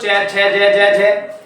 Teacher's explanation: जब च बोलते हैं ना तो हमारी जीभ कहां लगती है दोस्तों तालू के लगती है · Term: तालव्य व्यंजन